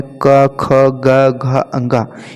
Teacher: का वर्ग में क, ख, ग, घ, अंगा, ये कंठ से उच्चारित होते हैं।